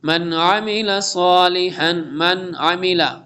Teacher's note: نون ساکن کے بعد حروف ہلکی میں سے عین اظہار ہوگا